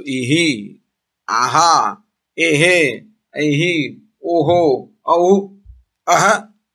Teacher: So that ha is joined with the previous vowel. Therefore, Visarga is pronounced in keeping with the preceding vowel.